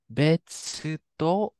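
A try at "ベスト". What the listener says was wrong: So this right here would be in English would start with the V, so it's actually a vest. Vesto. But B To V. We don't have V in Japanese.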